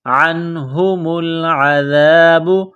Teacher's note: نون ساکن کے بعد ہا ہے، حروف حلقی ہے تو یہاں غنہ نہیں کریں گے